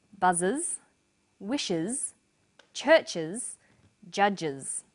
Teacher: The first pronunciation of the final S is uz. It's pronounced this way after sounds such as s, z, sh, ch and j.